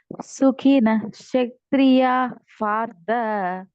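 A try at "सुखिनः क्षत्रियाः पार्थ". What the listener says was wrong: ఆ పూర్తిగా పలకండి అక్కడ సుఖినః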